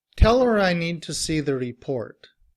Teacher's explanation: when we are reducing her, we don't pronounce the H.